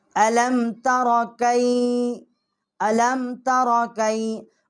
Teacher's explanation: اس کے آگے تا جو ہے اس کے اوپر زبر ہے، را جو ہے اس کے اوپر بھی زبر ہے، را ہم موٹا پڑھیں گے